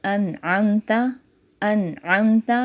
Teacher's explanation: نون ساکن کے بعد عین آ رہا ہے تو یہاں نون کو ظاہر کر کے پڑھیں گے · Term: اظہار